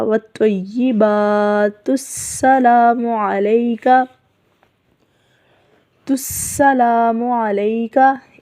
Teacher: اگر ہم اس کو یہاں پر وقف نہیں کریں گے تو پھر ہم تا کو پیش کے ساتھ ہی پڑھتے ہوئے سین کے ساتھ ملائیں گے، حمزہ کو حذف کر دیا جائے گا